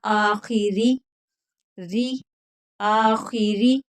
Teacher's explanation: आखिरी नहीं पढ़ना, आखिरी, री, आखिरी, रा को बारीक पढ़ना है